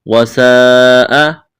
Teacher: لمبی مد ہے، اس کو کھینچنا ہے، حمزہ کو جلدی پڑھیں گے بغیر کھینچ کے